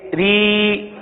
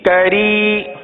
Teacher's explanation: را کو باریک پڑھیں گے کیونکہ را کے نیچے زیر آپ کو نظر آ رہا ہے